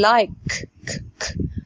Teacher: ك من غير اي اهتزاز في الاحبال الصوتيه